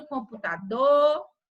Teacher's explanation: veja que a última sílaba, ela é bem forte, ela é tônica.